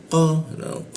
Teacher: lidahnya kita naikkan sehingga tidak ada hembusan udara ketika membaca